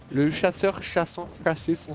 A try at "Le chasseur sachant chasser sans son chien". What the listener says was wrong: Non, chassant, chassé, c'est toujours pas bon.